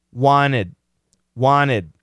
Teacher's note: this n is killing the T the t is gone · We still have two syllables, right? Just because we cancel the T doesn't mean we cancel the syllable.